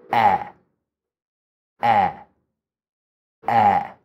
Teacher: And now with my tongue, the tip of my tongue stays down behind my teeth, and the back of my tongue goes up to help open up the vocal cords or the throat there. Also, the tongue gets wide.